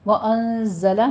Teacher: زائی کی آواز سیٹی کی اور قوی آواز کے ساتھ پڑھی جائے گی۔